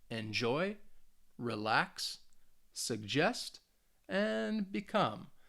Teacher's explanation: you should be able to hear the stress on that second syllable